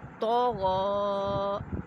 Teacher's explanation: دونوں حروف مستعلیہ ہیں، ان کو ہم نے پر یعنی موٹا کر کے پڑھنا ہے